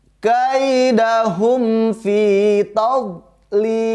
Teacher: Ketika ada huruf do, kita sudah tahu makhrajnya, yaitu cara mengeluarkan huruf do. Pinggir lidah menempel pada gigi geraham yang atas, boleh yang sebelah kanan, boleh juga yang sebelah kiri.